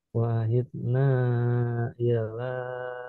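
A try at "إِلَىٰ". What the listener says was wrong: Nah, masih illa dihindari. Wa ahidna ila ila. Ya, jadi tidak ditasdid. Dipanjangnya sudah oke tadi. Panjangnya.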